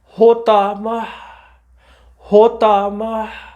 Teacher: آخری حرف تا آئی، وہ ہا میں بدل گئی